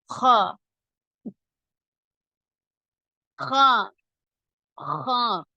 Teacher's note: நாவின் கடைசி பகுதியை மட்டும் சற்று உயர்த்தி குரலை லேசான காரலின் போதில் உள்ள கரகரப்புடன் முன் தொண்டையில் வெளிப்படுத்த வேண்டும் உதாரணம் தொண்டையில் உள்ள எச்சிலை காருவதை போன்று ஹா ஹா ஹா அடுத்த எழுத்து